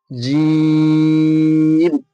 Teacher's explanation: জিম উচ্চারণ হয়ে থাকে জিভের মাঝখান এবং তার বরাবর ওপরের তালুর সাথে লাগিয়ে।